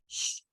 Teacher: The SH you can hold on to for an extended, indefinite period of time. Shh. And go on forever.